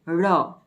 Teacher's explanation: ળનો ઉચ્ચાર કરીએ છીએ ત્યારે જીભ પેઢા અને તેની ઉપરના ભાગની નજીક જઈ તરત જ નીચે પછડાય છે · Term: થડકારવાળું વ્યંજન